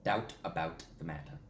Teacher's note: a lot of sharp T's right there and a double au diphthong sound